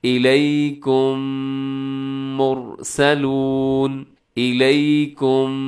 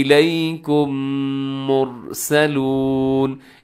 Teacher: یہاں پر ایک لفظ لکھا ہوا ہے الیکم، پھر آگے لکھا ہوا ہے مرسلون۔ اب الیکم کے آخر میں میم ساکن ہے، اور میم ساکن کے بعد پھر میم آ گیا، تو ہم نے اس کا ادغام کر دیا، دونوں کو ملا دیا۔ ایک میم کی طرح پڑھے جائیں گے۔ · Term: ادغام شفوی